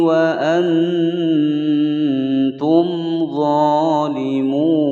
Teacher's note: Wa antum mim sukun bertemu huruf dhad, mim sukun bertemu huruf dhad, maka dia dibaca jelas idhar syafawi. Dha dibaca panjang dua ketukan.